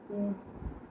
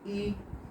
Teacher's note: उच्चारण करते मुख बंद रहता है।